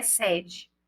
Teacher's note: a palavra sede é pronunciada com o E aberto, ou seja, como se eu tivesse com acento agudo